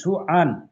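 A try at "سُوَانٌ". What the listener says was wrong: সুআন না, সুয়ান, সুয়ান। আন না, ওয়ান ওয়ান। সুওয়ান, ওয়ান, ও সুওয়ান।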